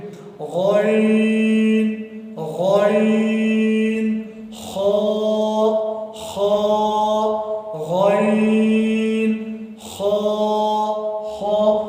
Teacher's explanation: حلق کے وہ حصے سے ادا ہوتا ہے جو منہ کی طرف ہو، جو منہ کے قریب ہو